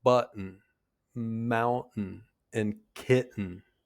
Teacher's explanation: Did you hear how the T is just barely there? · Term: glottal stop